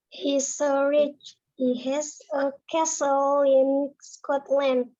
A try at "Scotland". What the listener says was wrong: Yes, Scotland bacanya. Scotland. Kalau berdiri sendiri, yang belakang nih bacanya memang betul land. Tapi kalau Scotland, nah Scotland yang betul.